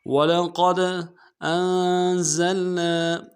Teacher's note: وَلَقَدْ أَنزَلْنَا حمزہ کو نون ساکن کے ساتھ ملانا ہے، نون ساکن مقنع کریں گے. زا کو لام کے ساتھ ملانا ہے سیٹی ادا کرتے ہوئے، اور نون کے ساتھ الف مدہ ہے، مدہ عارض ہے، دو الف مدار میں کھینچیں گے.